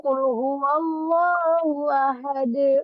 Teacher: Ketika dia dibaca sukun qul huwallahu ahad, maka dia dari ahadun menjadi ahad, maka dinamakan qalqalah.